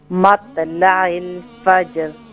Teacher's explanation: مت نہیں ہوگا یہاں طوا ہے نا. طوا موٹا ہوگا